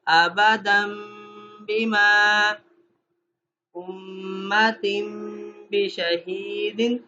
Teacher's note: ایسے ہی ابدن بما، ابدن بما نہیں پڑھا، کیا پڑھا ہے؟ غنہ کیا ہے، ملایا ہے تنوین کو میم کے ساتھ